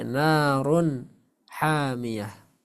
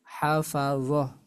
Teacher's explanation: ketika tamarbutah di di ujung bacaan di akhir bacaan maka dia berubah menjadi huruf ha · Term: tamarbutoh